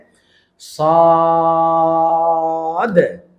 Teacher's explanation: এটা হল মোটা ধনির হরফ যেটাকে আমরা এসতেলা বলতেছি মানে এর সাউন্ডটা ভারী হবে মোটা হবে · তখন আমরা টান দিব, মোটা করব এবং শেষে একটা ধাক্কা দিব।